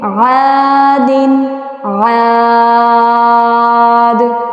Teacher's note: عین الف زبر ہا، دال دو زیر دن، عادن عاد. لاسٹ پہ دال آ رہا ہے اور دال پہ قلقلہ بھی کرتے ہیں